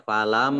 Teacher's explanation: mim tasjid, ya, ini dibaca gunah, ya, falam, jadi jelas gunahnya, ya.